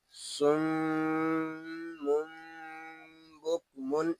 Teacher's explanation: یہاں صاد جو ہے یہ پر ہوگا اور میم شدد میں غنہ ہوگا